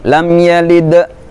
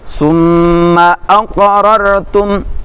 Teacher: Sughra itu kecil, pantulannya kecil, tidak sebesar qalqalah kubra nanti ya. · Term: qalqalah sughra